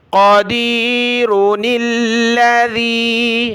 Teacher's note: نون کو لام کے ساتھ ملائیں گے، پھر یہ خالی الف چلا جائے گا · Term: چھوٹا نون